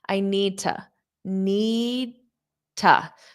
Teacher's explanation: my mouth is in that D position, but I just don't push it out. · So this to can become ta.